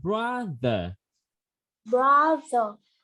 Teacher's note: TH lưỡi để giữa hai răng cả lớp ơi.